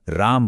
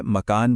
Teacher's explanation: वो जो आखिर वाला अ है वह बोला ही नहीं जाता।